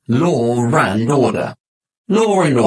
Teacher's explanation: In fluent speech, if a word ends in an or sound, like law, and the next word begins in an you'll often hear a r sound linking them together